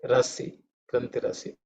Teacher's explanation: grantihi, the visarga becomes r, so that's how you get rasi, grantirasi.